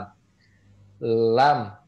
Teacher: ujung lidah bertemu dengan langit-langit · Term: huruf lam